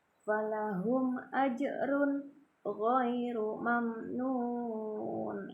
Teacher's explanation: Nah, kemudian huruf ro bertanwin ya, domah tanwin bertemu dengan huruf ghain ya. Huruf ghain ini termasuk idhar hakiki ya, idhar halqi, maka dibaca jelas juga ya.